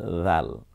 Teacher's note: হ্যাঁ, এর পরে যে আকৃতিটা আছে, এখন দাল আছে, এই দালটাকে আমি রাল বানাবো। রালটা নরম আওয়াজে নিঃসন্দেহে জিহ্বার আগা এবং সামনের দাঁতের আগার সাথে মিলিয়ে আমরা বলবো রাল, নরম আওয়াজ, রাল।